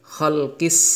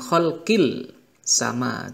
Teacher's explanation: Maka kita membacanya ada hukum bacaan alif lam syamsiyah, yakni Alif lam bertemu dengan huruf sin ini dengan cara melebur gitu ya. Jadi alif lamnya tidak dibaca jelas, sehingga membacanya kholkis, bukan kholkil sama, tapi kholkis dan seterusnya.